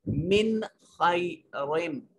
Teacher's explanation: नून साकिन है और उसके बाद खा हुरूफ हलकी या इजहार में से है, नून को जाहिर करके पढ़ेंगे। मिन खैरिम, रिम, रा के नीचे तनवीन है और इसके बाद मीम है, इदगाम हो रहा है।